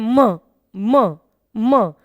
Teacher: मुंह से भी हवा का प्रवाह आ रहा है और नासिका से भी हवा का प्रवाह आ रहा है। तो मां जो ध्वनि है वो बिना नाक को खोले या नाक से बिना हवा निकले सही से उच्चारित नहीं हो सकती।